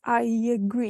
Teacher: you have this y in the middle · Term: intrusion